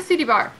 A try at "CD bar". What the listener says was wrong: Are you saying CD bar or... When you say it fast, it sounds like city bar.